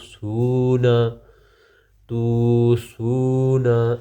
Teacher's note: واو مدہ پھر ایک الف کے برابر لمبا ہوگا۔ نون زبر نا، تو سونا، تو سونا، اس طرح۔